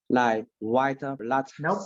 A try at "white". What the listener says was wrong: No, there's no whiter. There's no whiter. It's white. T, there's no T. Okay, T. Just white. No T. Okay, white.